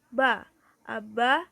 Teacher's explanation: berbunyi pa apa cara artikulasinya yaitu plosif atau letupan yakni disini artikulator menutup sepenuhnya aliran udara sehingga udara mampat kebelakang kemudian penutupan itu dibuka secara tiba-tiba sehingga menyebabkan terjadinya letupan